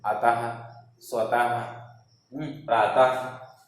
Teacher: इसके उच्चारण में हमेशा अंत में हा जैसे कि शब्द हा जैसा अनुभव होता है। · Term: विसर्ग